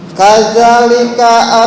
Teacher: Kadzalika Kaza panjang satu alif.